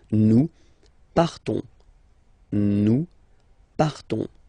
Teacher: classic ending ONS, you don't pronounce the S, you just have this on sound nasal. Nous partons, nous partons.